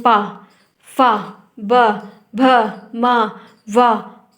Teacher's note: दयोष्ठ में क्या होता है कि आपकी दोनों ओठों का प्रयोग होता है।